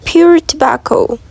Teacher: The p in pure is normally released before the vowel. Imagine saying pure and letting go of the air when saying the p. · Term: oral release